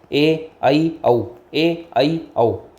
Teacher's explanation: मुंह खुलता है वो होता है वो उसका एग्जांपल है आ अर्ध विवर्त जिसमें आधा मुंह खुलता है